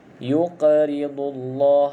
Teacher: huruf qaf, iaitu huruf yang perlu kita lantunkan, sebab qaf ni salah satu daripada huruf qalqalah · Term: qalqalah lantunan